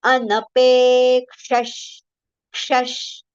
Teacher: then visarga sound, partial sh, talavya sh, shabri wala sh.